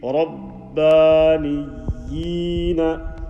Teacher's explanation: Stretching that standing kasra sound.